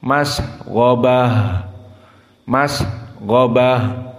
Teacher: maka h dalam keadaan sukun hukumnya di sini hams maka di saat disukunkan menjadi masghabah dibaca hams dari ha masghabah